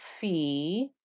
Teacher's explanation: So let me get my red pen out and we'll have a closer look. We have a fa with a kasra and a ya, so that's the 2-count stretch